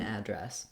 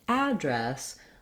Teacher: i've been saying address with the a black cat vowel